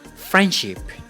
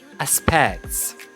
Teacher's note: the omission of letter D in friendship or letter T in aspects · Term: Elision